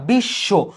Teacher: তুমি এই তালবসটাকে দুইবার উচ্চারণ করছো